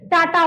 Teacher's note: जीभ उचड़ गया। जीभ किधर गया? ऊपर गया। यानी मूर्धा का प्रयोग करते हैं।